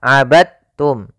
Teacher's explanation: jangan dibaca abadtum ya tapi langsung dimasukkan ke ta abadum bukan abadtum ya Meskipun Dal termasuk huruf Qalqalah karena dia